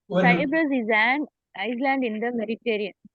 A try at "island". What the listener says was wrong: ஐஸ்லாண்ட்ல படிக்க கூடாது. ஐலாண்டுக்கு படிக்கணும்.